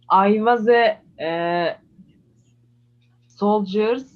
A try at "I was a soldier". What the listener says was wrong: Without S, I was a soldier. Without S sound.